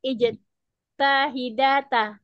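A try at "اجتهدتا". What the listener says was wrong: Ijtahadata. Ijtahadata. Ifta'ala. Itu bukan ijtahadita, ijtahadat, ijtahidata. Ifta'ala ya, fathah semua, ijtahadata.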